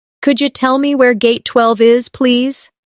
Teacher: In natural speech, could you sounds like could ya.